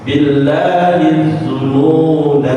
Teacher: Tapi kalau kita berhenti di zununa, maka dibaca panjang